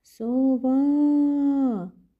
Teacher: ми наголошуємо другий склад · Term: наголос